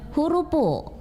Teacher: di dalam bahasa Bugis itu F-nya ini kan akan berubah lagi menjadi P karena di dalam bahasa Bugis kita tidak mengenal konsonan F. Yang ada itu P.